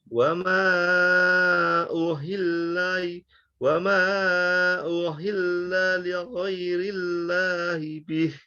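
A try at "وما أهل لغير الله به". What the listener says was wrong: Jadi ketika kita baca lam bertasdid, jangan sampai putus ya. Jangan uhil la. Tapi wa ma uhilla li ghairillahi bih. Wa ma uhilla. Jadi yang harus kita waspadai baca lam jangan Lam itu dialirkan tapi kadar alirannya itu sedikit karena dia punya sifat bainiyah, pertengahan antara syiddah dan rokhawah.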